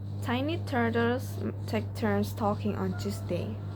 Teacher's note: The t sound is a voiceless alveolar plosive. It is produced by touching the tip of the tongue to the alveolar ridge just behind the upper front teeth, like stopping the airflow and releasing it without vibrating the vocal cords.